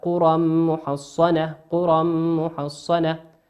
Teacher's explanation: تنوين أتى بعده حرف الميم، والميم من حروف الإدغام بغنة يغن بمقدار حركتين